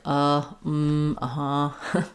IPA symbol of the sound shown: ə